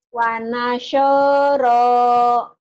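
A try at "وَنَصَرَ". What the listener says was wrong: Soalnya jangan wanashoro, jangan digituin mulutnya. Jangan gitu Bu mulutnya. Soalnya jangan mulutnya jangan dimonyongin. Wanasho, jangan. Wanasoro, salat yuk. Bukan Bu. Wanasoro, iya Bu. Wa nasara.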